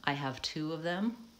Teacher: then I'm using the pure vowel ooh those words typically are stressed they have the pure vowel but